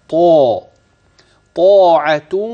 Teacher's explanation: الطاء مفخمه في اعلى مراتبها الالف بعد الطاء تابع للطاء الاحظ انني اصل كلمه طاعه الصله حينما اصل الكلمه بما بعدها · الطا المفتوحه وبعدها الف في الكلمه الاولى في اعلى مراتب التفخيم والالف تابع لحرف الطاء